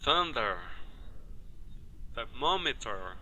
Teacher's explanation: representa o som de th sem voz ou soprando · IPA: θ